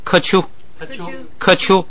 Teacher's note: 说本来是咔丘，因为乌是闭元音，所以变成科